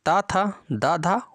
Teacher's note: इन वर्णों का उच्चारण स्थान दंत हो जाएगा